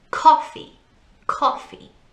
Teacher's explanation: Don't forget, we put the emphasis, the stress on the first part of the word.